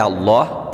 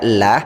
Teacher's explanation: lafadz Allah di sini dibaca dengan tebal artinya dibaca Allah tidak dibaca lah karena huruf sebelum lafadz Allah